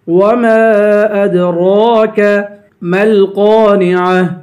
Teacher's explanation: میم کو لام سے ملا کر قاف کو پر پڑھیں گے ، قاف کے بعد الف ہے، الف حروف مدہ ہے، اسے